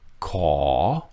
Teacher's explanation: ขอ first word, ขอ with the rising tone. So you go down and then you come up.